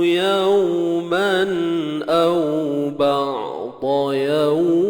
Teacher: Ni mad lin 2, 4 ataupun 6 harakat.